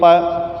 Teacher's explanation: जैसे ही आप प का उच्चारण करोगे तो आपके होठ आपस में स्पर्श करेंगे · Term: स्पर्श वर्ण